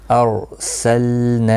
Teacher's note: اب دیکھیں یہاں پر را ساکن ہے تو پہلے والے حرف کے اوپر جب بھی زبر یا پیش ہوتا ہے تو رائے ساکنہ جو ہے وہ پر پڑھا جاتا ہے، یعنی موٹا پڑھا جاتا ہے، باریک نہیں پڑھا جاتا ہے۔ نا الف مدہ ہے، ایک الف کی مقدار کے برابر کھینچ کر پڑھا جائے گا، وقف کی صورت میں بھی اور ملانے کی صورت میں بھی۔